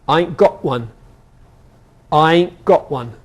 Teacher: in Scotland and London, t is often replaced by the glottal plosive